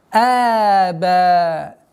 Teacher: После фатхи у нас удлинение в размере двух огласовок, естественно удлинение. Мадд таби'и.